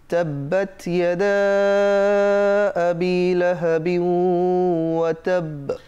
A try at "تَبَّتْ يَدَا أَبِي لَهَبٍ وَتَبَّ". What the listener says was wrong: আচ্ছা, বিউ তো ঠোঁটে থাকলো আওয়াজটা, কিন্তু যেতে হবে তো নাকে, কারণ এটা তো একটা গুন্না, ইদগামে বা গুন্না। কেমন, বিউ নাকে যাবে, বিউ এখানে তাব্বাত, এখানে তায়ের মধ্যে একটু হামস, একটু বাতাস দিতে হবে।